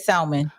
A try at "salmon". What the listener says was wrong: That is not the word. It's salmon. Yeah, the L is silent. Yeah, it's salmon. Nah, you don't. There's no L. That's